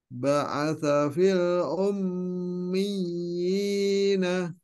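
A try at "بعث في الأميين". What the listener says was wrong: Dimatikan Pak. Ummiyin. Disukunkan.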